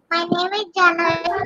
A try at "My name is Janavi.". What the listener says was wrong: Why are you closing your mouth like this? Open your mouth and say.